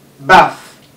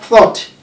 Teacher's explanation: the dental fricative, where the tip of your tongue touches your upper teeth. That's TH.